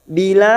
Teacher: 4 harakat kita panjangkan dan ujungnya kita pantulkan qalqalah kubra karena ada huruf dal yang mati asli di akhir kalimat dan dibaca waqaf.